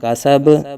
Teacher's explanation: آگے وقف، کاسب، تو وقف میں با ساکن ہو جائے گا، تو با ساکن میں حروف قلقلہ میں ہونے کی وجہ سے قلقلہ یہاں خوب ظاہر کریں گے۔